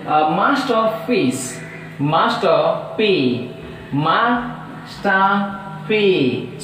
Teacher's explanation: masterpiece, masterpiece, so 3 syllables, so that stress is on first syllable